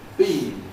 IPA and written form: biːn (bean)